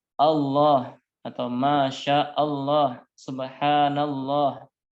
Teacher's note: maka lafadz Allahnya dibaca dengan tebal tafkhim